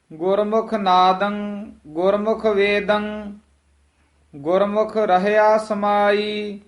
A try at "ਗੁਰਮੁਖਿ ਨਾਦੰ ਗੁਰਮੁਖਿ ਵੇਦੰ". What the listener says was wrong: ਨਾਦੰ ਵੇਦੰ ਇਸ ਤਰ੍ਹਾਂ ਉਚਾਰਨ ਕਰਨਾ, ਗੱਗੇ ਨਹੀਂ ਲਾ ਦੇਣੇ। ਨਾਦੰਗ ਵੇਦੰਗ ਇਸ ਤਰ੍ਹਾਂ ਨਹੀਂ। ਗੁਰਮੁਖ ਨਾਦੰ ਗੁਰਮੁਖ ਵੇਦੰ ਗੁਰਮੁਖ ਰਹਿਆ ਸਮਾਈ।